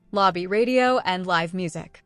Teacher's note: the letter r in radio is consonant reule and is pronounced with an l sound in Korean